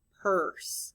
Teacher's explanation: if i say the word purse i don't really hear the u because the r kind of takes over that sound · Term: r controlled vowel sounds